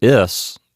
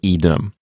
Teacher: in the word is, the I is short. But in īdem, you have a long I.